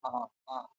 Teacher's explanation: जब आप बड़ा आ का उच्चारण करेंगे उसमें आपका मुख जो है पूरा का पूरा आ पूरा खुल जाएगा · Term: विवृत स्वर